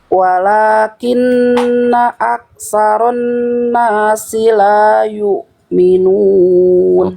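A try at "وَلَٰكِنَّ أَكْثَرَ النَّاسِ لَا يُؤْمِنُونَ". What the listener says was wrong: Oke, kaf sukunya dipercikan dulu. Ka. Ya, aksaro.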